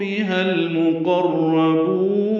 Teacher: ہا کو المقربون کے لام سے ملانا ہے تو یشرب بہل مقربون ہوگا. لام ساکن پہ اظہار قاف را دونوں پر ہیں. با کو لمبا کریں گے.